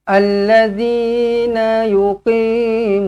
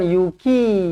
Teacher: Kalau qaf dekat anak tekak ni, kalau ki dia depan lagi. Sebab tu dia nipis.